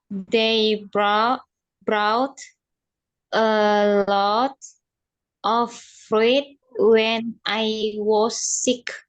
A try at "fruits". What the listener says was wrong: Bacanya fruits ya, bukan fruit.